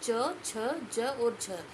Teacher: तालव्य ध्वनियां है वो च छ ज और झ ये है